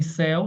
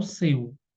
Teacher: Céu aberto, seu, fechado